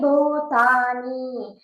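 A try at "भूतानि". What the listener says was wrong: Don't make bhutani. Ni is not dirgha. Ni is inside. See the ni inside. So it is Hrisva.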